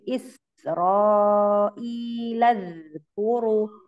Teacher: ini sinnya rakhawah ya, mengalir. Jadi jangan Isra tapi Israilaz kuru.